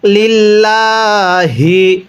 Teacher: এরপরে লাম লামজের লিল, লাম খারা জবর লা, হাজের হি, লিল্লাহি, অনেকে আমরা এটাকে লিল ল পড়ি। যদি আল্লাহ শব্দের পূর্বে এরকম জের থাকে তাহলে আল্লাহ শব্দটিকে অবশ্যই চিকন করে পড়তে হবে